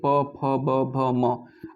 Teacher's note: और जो पांचवा दोस्तों है प फ ब भ म, इसका उच्चारण दोस्तों ओठ से किया जाता है। आप बोल के देखिए प फ ब भ म, आपके ओठ से उच्चारण हो रहा है।